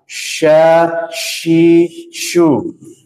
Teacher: Tengah lidah bertemu bukan menempel. Jadi bertemu dia menyisakan celah yang sedikit. maka dia mengeluarkan udara. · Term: shin